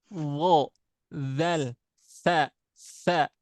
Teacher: Kalau dha dzal sa dia dari ujung lidah ya, nempel ke ujung gigi seri atas. Hmm. ada bagian lidah yang keluar.